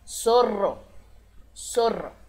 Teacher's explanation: percebam que como tem dois r o som vibra por mais tempo e mais forte